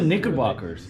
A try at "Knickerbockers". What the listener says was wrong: No, Knicker, not Nickel. I swear you said Nickelback.